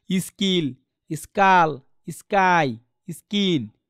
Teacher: স্কাই মানে খয়ের উচ্চারণ খ হচ্ছে না, এটা ক মানে কয় হচ্ছে, মানে অ্যাসপারেটেড হচ্ছে না।